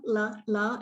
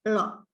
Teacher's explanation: there are two L's in the language Malayalam. One of them is a frontal L, la, and the other one is a retroflex L, la